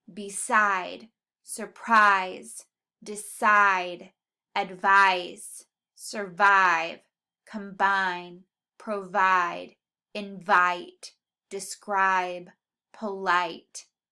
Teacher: that I sound should be in the second syllable, and that second syllable should be emphasized just a little bit more